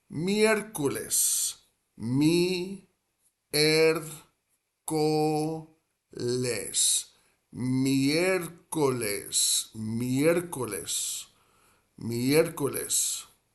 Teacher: And that first E, miércoles, like the start of that second syllable, miércoles, that first E is where the accent is placed in miércoles